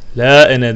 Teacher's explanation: La ene de yine metni munfasıl vardır. Aslında ena metni tabi gibi görünse de ena'yı uzatmıyoruz. Ene bir zamirdir ve ene zamiri bu şekilde okunur.